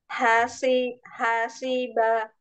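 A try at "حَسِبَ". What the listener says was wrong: Nah, C, jangan diangkat. Hasiba. Biasa aja. Huruf sin itu huruf yang paling mudah ya. Ketika dia ketemunya sama gigi seri bawah. Si. Hasiba. Tipisin aja.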